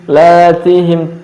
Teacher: Lam dan ta'nya dibaca istifal tipis.